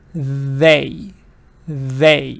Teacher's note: your tongue has to go between your teeth and then you push out the air